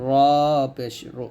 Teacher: নুন জিহ্বার আগার তার বরাবর উপতালার সঙ্গে লাগবে নুন পেশ নু র জিহ্বার আগার উল্টা পিঠ তার বরাবর উপতাল সঙ্গে লাগবে